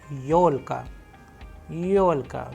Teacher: where you can see the stress is on yo because it is also a vowel